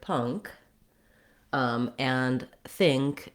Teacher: many nk words actually have the ng sound and then the k